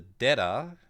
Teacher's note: And the dera is what happens when terra under goes renaku. You voice the first syllable. So it turns the t into a d.